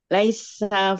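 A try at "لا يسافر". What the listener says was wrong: Bukan laisa loh. laisa, bukan. Bukan laisa. Ini bukan laisa. Yang di atas ada barisnya. Laisafira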